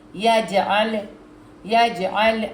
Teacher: جیم پہ قلقلہ، جیم کو ذرا زور سے دبا کے پڑھنا ہے